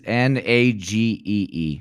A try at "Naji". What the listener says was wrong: That's a J.